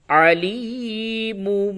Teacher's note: اقلاب ہوتا ہے، یعنی کہ نون اور تنوین کی آواز کو میم سے بدل کے پڑھتے ہیں غنے کے ساتھ